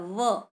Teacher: आपका होठ जो है वो आपके दांतों को छू रहा है, व, तो दंत ओष्ठ वही उच्चारण स्थान हो गया।